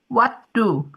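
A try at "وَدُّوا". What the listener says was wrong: Waddu panjang. Waddu. Naknya panjang.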